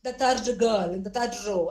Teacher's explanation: in parts of Karnataka the r is very prominent